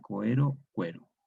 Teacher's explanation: Diptongo OE se asimila al diptongo UE. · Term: asimilación